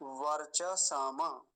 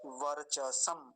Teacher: मकार पर हलंत है तो वही रुक जाएंगे